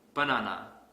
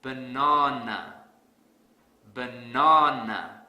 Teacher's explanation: because I don't stress the second syllable so to fix this I will stress the second syllable really hard